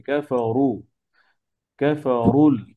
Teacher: زين للذين كفروا الحياة কাফারু, الدنيا আপনার র পেশ হলে দম্মা আছে, মোটা হবে